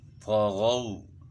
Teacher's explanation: غین جو ہے نا اس کو بھی موٹا پڑھنا ہے، طغوا، یہاں جو ہے نا مولین ہے، طا کو بھی موٹا پڑھنا ہے، غین کو بھی